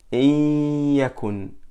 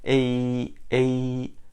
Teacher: For example, in yakun, so we do idgham, which means we merge a noon sakina into the ya. So it will be ya mushaddada. Then we do ghunna on the same time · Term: idgham with ghunna